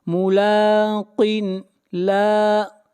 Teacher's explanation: لام کو کھینچ کر پڑھیں گے ایک الف کے برابر، لام کے اوپر کھڑی زبر ہے